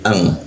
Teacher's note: Jadi bukan an tapi dengung dia jadi ang ya. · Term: ikfa